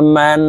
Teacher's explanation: এখানে দেখুন, হরকতের বামে নুনের উপরে তাসদীদ আছে, এই কারণে এই মিম তাসদীদওয়ালা নুনের সাথে নাকের বাসি থেকে 3 সেকেন্ড পরিমাণ গুন্নাহ করে ধরে রাখতে হবে